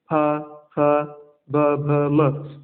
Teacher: फ, फ, ब, भ, म, ये ओष्ठ से उच्चारित होते हैं